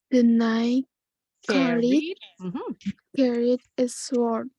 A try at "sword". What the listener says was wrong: W-nya silent. W-nya silent. Sword. Sword. Jadi W-nya nggak bunyi.